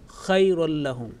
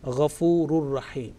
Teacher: So tanween joining with the ra mushaddad, and we will say ghafurur rahim. There will be no trace of nasal sound. · It's a complete merging, is al-idgham al-kamil, complete merging, complete assimilation, and where the nasal sound is not pronounced